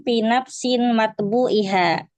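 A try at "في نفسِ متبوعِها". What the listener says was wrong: nafsi mudaf, nak boleh tanwin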